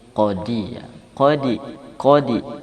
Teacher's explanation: Qalqalah pada huruf dal dan gym itu lebih dekat kepada kasrah